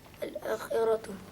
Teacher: Mad badal. Sebab hamzah jumpa dengan Alif. alif dia jadi mad. Berapa harakat? 2 harakat.